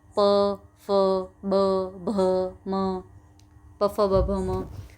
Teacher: आपके होठ टच हो रहे हैं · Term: प वर्ग